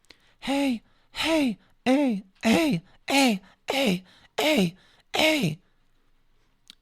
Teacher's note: that's sounding like I'm trying to force that little glottal attack to happen but I'm obviously getting sounds almost like a cough in some way